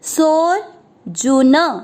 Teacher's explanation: चौथा चरण न पे दो मात्रा नई ती मामेती, फिर सो के बाद में है अवग्रह, आपको सो की मात्रा को लंबा खींचना सो, फिर जू के ऊपर आधा रह उसको सो को लंबा खींचते हुए बोलेंगे सोर जुन, न में अ मिक्स करेंगे सोर जुन।